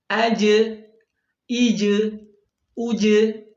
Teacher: sifatnya qalqalah, mengucapkan huruf dengan terpantul